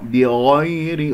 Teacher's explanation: الراء من كلمة بغير مرققة لأنها مكسورة · الغين مفخمة مرتبة ثانية، بغير ولا أقول بغو، لا يعمل الشفتين قاعدة مهمة، يا ساكنة قبلها مفتوح ننتبه إليها يعني يا لين، لا أقول بغير الحق هكذا، أنا نبرت هذه الياء كأنه قرأتها مشددة فننتبه لهذا الأمر.